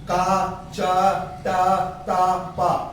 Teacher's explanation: अगर आप बोलेंगे का तो का में क्या होगा? घर्षण पैदा नहीं होगा। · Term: अघोष ध्वनियां